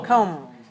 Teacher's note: this is the same O sound, comb, but the ending is not n, it's m.